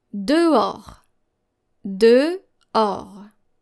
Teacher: So you don't hear the H sound here.